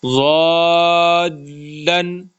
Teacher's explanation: لام کو تھوڑا سا وہ جھٹکا سے دینا ہے تاکہ شد ظاہر ہو جائے